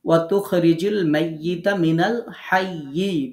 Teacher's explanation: অক্ফ করার সময় তাসদিদ উচ্চারণ করে অক্ফ করতে হবে।